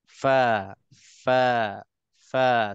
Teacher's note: Kita akan nampak bibir mulut bawah kita ini akan tersentuh, akan menyentuh gigi atas. Barulah itu makhraj fa yang betul.